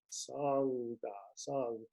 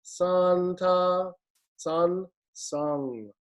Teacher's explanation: the n-g nasal your tongue in the back should rise in the back of your mouth song song that kind of rises up versus santa san sang